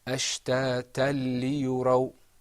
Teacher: this idgham is without a ghunna because we're not going to lengthen our voice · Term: idgham without a ghunna